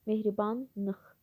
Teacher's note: Mehribanıx l şəkilçisin l samiti n kimi tələffüz olunur. Nəticədə iki qoşa n samit olur.